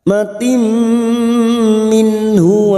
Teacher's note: Rahmatim kasrah tanwin bertemu mim idgham bi gunnah. masuk dan mendengung, masuk pada huruf berikutnya dan mendengung selama 2 atau 3 harokat.